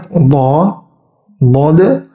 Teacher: lidahnya itu pas menempel di atas ke langit-langit seluruh lidahnya menempel ke langit-langit tetapi suaranya harus mengalir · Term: mengalir sempurna